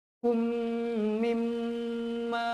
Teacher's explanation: idgham mithlain saghir, 2 harakat dengung